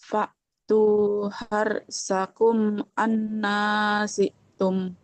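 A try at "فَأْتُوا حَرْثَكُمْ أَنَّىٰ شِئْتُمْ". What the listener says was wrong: syitum, huruf shin dia tengah lidahnya nempel ke langit-langit. Syitum,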